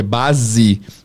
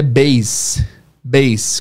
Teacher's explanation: A palavra base, que em português é base, com som de Z, em inglês é base, base, com som de S.